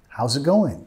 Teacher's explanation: Bajando de entonación al final.